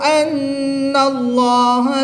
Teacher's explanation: نون مشدد میں ہمیشہ غنہ ہوتا ہے تو یہاں پر غنہ کریں گے